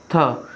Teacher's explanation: महाप्राण भी है, दंत भी है और व्यंजन ध्वनि भी है